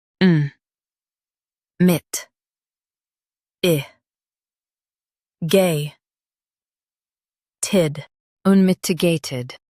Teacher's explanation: Stress mit and keep i light.